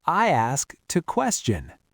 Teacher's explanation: You've got SK at the end of the first word, and the T has moved to start the next word.